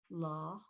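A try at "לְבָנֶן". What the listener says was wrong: Not la, it's le, almost like a eh. Le. Le, va, ne.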